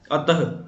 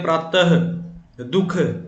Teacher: इस प्रकार के जो शब्द हैं जिनमें विसर्ग लगाया जाता है उसमें ह की आवाज सुनाई देती है